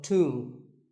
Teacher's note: the B is silent and the O is pronounced with an oo sound.